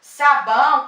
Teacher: Na palavra sabão, sabão, a vogal vai ser a letra A e a letra O vai ser a semivogal. Porque se você ouvir a palavra sabão, parece que termina com U, né? Mas na verdade se escreve com a letra O. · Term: ditongo